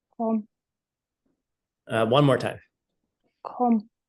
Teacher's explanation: So she did not use English G. She used more of a guttural K in English.